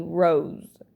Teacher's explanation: in this word instead of rose is going to be rose the s is going to sound more like a z in this in this word